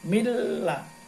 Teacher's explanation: Artinya memasukkan suara ke huruf depannya tidak berdengung. Nah, kalau tadi bihuna dengan berdengung, kalau bilahuna tidak berdengung. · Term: idgham bilahuna